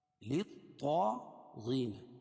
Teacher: یہ طا کو موٹا پڑھیں گے کیونکہ بتایا تھا کہ حروف مستعلیہ میں سے ہے